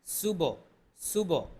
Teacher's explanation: এখানে কলকলা আছে সুবহ সুবহ কলকলা প্রতিধ্বনি হবে হাঁ কণ্ঠনালীর মধ্যখান থেকে উচ্চারণ হবে হা এক আলিফ টান হবে